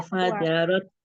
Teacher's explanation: Jadi nggak keluar lidahnya, dia di ujung gusi atas.